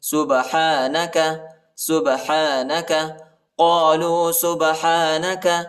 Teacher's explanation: با جو ہے حروف قلقلہ میں سے آتا ہے، با کو جھٹکا دینا ہے۔